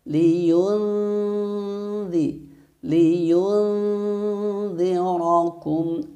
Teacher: hukum bacaan ikhfa hakiki, sehingga harus dibaca samar dan mendengung selama 3 harokat. Ya, jangan lupa nunnya tempelkan di huruf dzal.